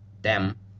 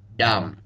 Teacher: the next word is just like the Arabic word for blood we learned earlier, dem, except this one has a heavier, darker D sound.